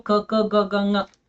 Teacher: ಕಂಠ್ಯ ಅಂದ್ರೆ ಕುತ್ತಿಗೆ ಭಾಗದಿಂದ ಹೊರಡುವಂತಹ ಅಕ್ಷರಗಳು